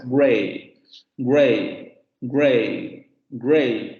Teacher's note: Anterior semicerrada no labializada, otra vocal cardinal, y va a aparecer más comúnmente en diptongación.